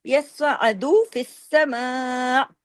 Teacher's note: اگر رکیں گے حمزہ پہ جھٹکا دے کے، حمزہ کی آواز آپ کے گلے میں آنی چاہیے